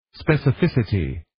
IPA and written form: ,spɛsʌ'fɪsʌti (specificity)